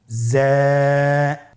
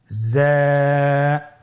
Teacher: উচ্চারণ করার সময় অবশ্যই এক আলিফ টেনে পড়তে হবে, এক আলিফ টেনে পড়তে হবে। হরফটি বারিক হরফ, এই জন্যে পাতলা করে উচ্চারণ করতে হবে। জা হরফটির মাখরাজ আপনারা দেখতে পাচ্ছেন, জিহ্বার আগা সামনের নিচের 2 দাঁতের পেট ও আগার সঙ্গে লাগিয়ে উচ্চারিত হয়।